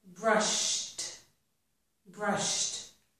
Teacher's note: If the verb ends in the sh sound, the ed will sound like t.